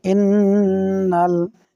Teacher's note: এক আলিফ গুন্না হবে ওয়াজিব গুন্না